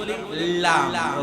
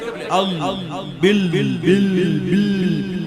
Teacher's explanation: লামের মাখরাজ হচ্ছে জিহ্বার আগার পাশ